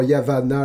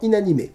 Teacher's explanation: Les consonnes doubles sont rallongées. Dans Yavanna, le N est donc long, comme dans Innommable, plutôt que court, comme dans Inanimé.